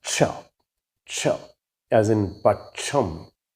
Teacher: cha, which is actually a combination of two sounds, k and sha. But the sound is used as a single sound in Malayalam, cha, as in pacham.